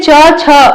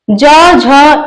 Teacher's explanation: च वर्ग में च छ अघोष ज झ य सघोष होगा